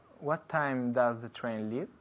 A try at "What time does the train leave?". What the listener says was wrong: En casa es muy importante pronunciar bien la M, como siempre. No decimos time, time. Tie es corbata, ¿sabes? Time, time. Cerrando la boca, yeah?